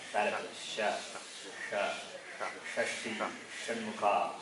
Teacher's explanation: If it's sha, the tongue is touching the palate.